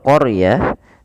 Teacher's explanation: Kemudian pelafal qaryah, di situ huruf ro-nya ditebalkan. Karena huruf ra yang didahului dengan huruf fathah, maka dia kita namakan dengan ra tafkhim, harus tebal.